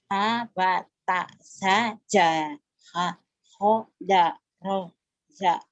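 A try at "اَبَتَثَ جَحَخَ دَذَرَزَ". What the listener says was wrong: Dada bukan daro. Dada roza. Ulang.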